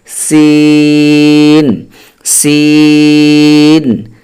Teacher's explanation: জিহ্বার আগা সামনের নিচের দুই দাঁতের পেট ও আগার সঙ্গে লাগাইয়া উচ্চারণ করতে হবে